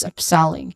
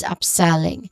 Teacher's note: you start with up, which has a short quick vowel sound. And then selling, which has a short e sound and an ng sound or the nasal sound.